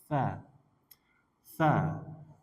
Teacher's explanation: Tsa tsa itu kayak dza. Ujung lidah dengan gigi sehari atas.